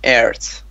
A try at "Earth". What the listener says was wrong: Earth. Work more on the pronunciation of TH.